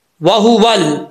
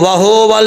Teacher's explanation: वाहु पढ़ते वक्त होंठ गोल करेंगे